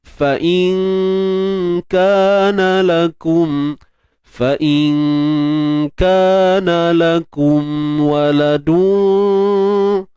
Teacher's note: Jelaskan yang nun mati jumpa kaf ni dengung nipis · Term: ikhfa hakiki